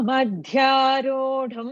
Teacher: It is not rodum. It is mahaprana. Dh is there. Rodum. The dh should come correctly.